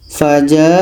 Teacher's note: Contoh yang terakhir ini dalam surah Al-A'raf ayat 4 ini. Ada tanda mat bertemu hamzah dalam satu kalimah. Ini mat wajib muttasil, panjang 4 sehingga 5 harokat.